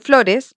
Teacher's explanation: en flores es lo que se marca en la o es la sílaba tónica